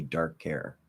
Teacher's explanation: it's going to sound like care with a weak K instead of a strong K